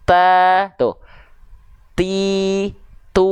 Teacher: sebenarnya sebelum keluar vokal a i u pada huruf ta itu ada percikan nafas dulu